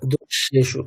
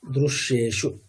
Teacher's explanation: রিকারের উচ্চারণটা একটু মানে উকারের মতো একটু শোনাবে, মানে এটা হচ্ছে র প্লাস উ তার একটা মিশ্রণ আর কি।